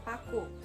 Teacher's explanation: Ciri-cirinya mati, oral, bilabial, plosif. Contoh katanya paku.